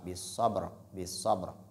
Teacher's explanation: ba est une lettre de qalqala. Il faut donc faire ce qu'on appelle une frappe. C'est-à-dire, il faut faire la qalqala, bis sabr.